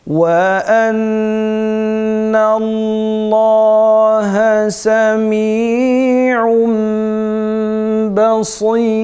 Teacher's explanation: tenvininden sonra ikrab harfi ba geldiği için halis mime çevireceğiz ve gunneli okuyacağız